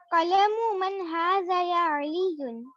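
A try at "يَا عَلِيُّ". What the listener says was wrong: tanween. There's no tanween. Remember, after ya, any name after ya will not have tanween.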